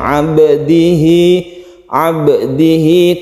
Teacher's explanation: tidak terlalu ditekan sangat ya, lain dengan qalqalah kubro, itu kita bedakan. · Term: qalqalah sugro